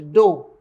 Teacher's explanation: she noticed that Anguillians drop the r sound